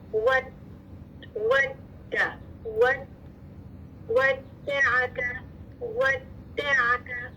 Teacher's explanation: दाल मुशद्दद यानी 2 दाल है, पहली दाल साकिन आवाज मखरज पे बंद हो रही है, फिर मुतहरिक दाल